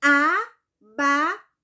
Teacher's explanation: Então, se a palavra abacaxi tem 4 sílabas, ela é polissílaba, ok? E qual é a sílaba mais forte dela? É o xi, é a última, né? Então, essa palavra abacaxi, ela é polissílaba e ela é oxítona.